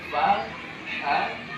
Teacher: dibaca dengan suara lemah ya suara lemah dan napas mengalir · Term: hams